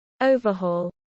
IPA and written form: ˈəʊvəˌhɔːl (overhaul)